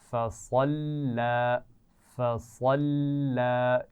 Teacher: صاد کی آواز موٹی ہونی چاہیے، لام کو موٹا نہیں پڑھیں گے